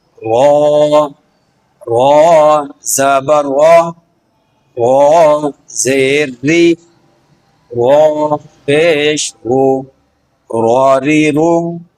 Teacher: اس کا مخرج زبان کی نوک جب اوپر کے دانتوں کے مسوڑوں سے لگے اس وقت یہ حرف ادا ہوتا ہے۔ اس حرف کی ادائیگی کے وقت زبان کی نوک ہلکے انداز میں لرزش کے ساتھ اپنے مخرج کو چھوتی ہے، جس سے حرف را کی صحیح آواز پیدا ہوتی ہے۔